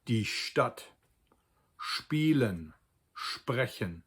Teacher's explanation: if it is followed by a T or a P in standard German it's actually a SHT or SHP sound.